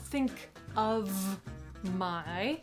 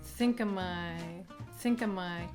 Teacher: Not, think of my, We say, think-uh-my, think-uh-my, so the word of, just becomes uh